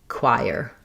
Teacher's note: first we have the k sound, then the w glide. This is the gliding diphthong I, like in light or night. And then that I goes right into the ire.